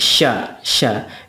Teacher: syin itu hampir mirip juga dengan Sin hanya saja ada sifat plusnya yaitu tafasyi tafasyi itu artinya menyembur